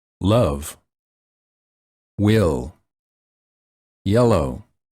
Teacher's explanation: the tip of the tongue touches the upper gum Ridge and the tongue is tense the air comes out on the sides of the tongue